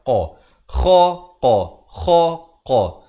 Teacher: Kha ni di hujung kerongkong. Qaf ni pula di pangkal lidah.